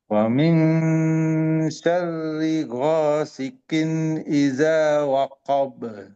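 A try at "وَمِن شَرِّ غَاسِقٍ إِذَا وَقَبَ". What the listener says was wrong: Nah, kofnya masih ada yang ganjal ya. Coba wosikin wosikin. Nah, jadi agak santai. Jangan sikin sikin wosikin. Wa min syarri ghasikin idza waqab.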